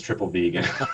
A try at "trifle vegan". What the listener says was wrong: It's not triple. The P is actually an F sound. It's the trifle vegan.